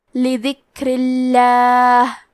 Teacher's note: لفظ الجلالہ کے لام کا حکم ہے ترقیق تو ہمیں حرف اللام کو پتلی آواز میں پڑھنا ہے